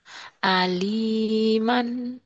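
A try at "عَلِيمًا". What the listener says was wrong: Ini kurang kena tuh. Kayak di tenggorokan ya. aliman. Kan kalau ari. Ari, tapi manggil arinya pakai ain. Ari, ari, ari itu pakai a ya. Kalau pakai ain, ari, aliman.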